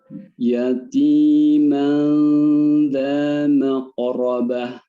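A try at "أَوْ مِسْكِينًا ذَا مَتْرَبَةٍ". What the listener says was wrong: Ahsan. Barakallahu fiik.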